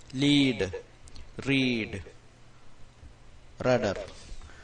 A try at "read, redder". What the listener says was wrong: Now you're struggling here. Read, redder. Read, redder. You're pronouncing those two R's a little bit too hard.